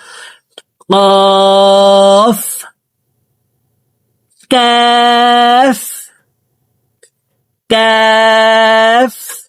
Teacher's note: কাফ হরফকে জিহ্বার গোড়া থেকে একটু আগে বাড়াইয়া তার বরাবর উপরের তালের সঙ্গে লাগাইয়া উচ্চারণ করে পড়ব।